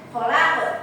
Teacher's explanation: Penjelasannya yaitu qaf pada kata khal ya, berada di akhir ayat dan disukunkan sehingga dibaca dengan memantul yang keras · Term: qalqalah kubra